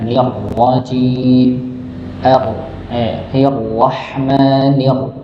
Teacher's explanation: ketika kita mendapati huruf RO di situ maka di ditebalkan